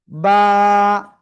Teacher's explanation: এক আলিফ টেনে পড়তে হবে, দুই ঠোঁটের ভিজা অংশ থেকে উচ্চারণ করে।